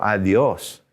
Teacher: we put our tongue way back there where we make d's in english but let's push our tongue forward